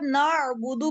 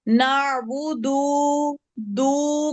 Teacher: दाल को नहीं खींचना क्योंकि हरकत नहीं खींचती